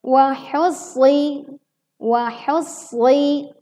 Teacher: shad dibaca dengan tebal dan kita tekan terlebih dahulu karena terdapat tasydid di atasnya